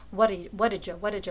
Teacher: in faster speech what happens is what did ya becomes what did jaw right you get that little Jeff sound so you actually get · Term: affricate